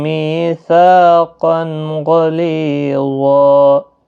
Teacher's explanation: تنوین کے بعد حروف حلقی کا غین آیا ہے، یہاں پر اظہار حلقی ہوگا، غنہ نہیں کریں گے۔